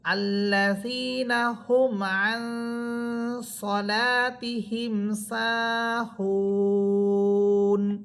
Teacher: থামলে নুন হরফ সাকিন হবে এবং তিন আলিফ পরিমাণ টেনে পড়তে হবে